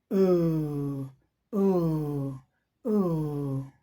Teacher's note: अब डायग्राम में हम देख रहे हैं बैक ऑफ टंग अप देखिए सीधी सी बात है ये जिहवा का पश्च भाग पिछला भाग जो है ऊपर की तरफ गया है